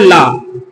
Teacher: ला को क्या कहते हैं पार्श्विक ध्वनि